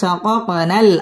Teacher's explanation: শাকাক এটা কলকলার হরফ ধাক্কা দিয়ে পড়তে হবে।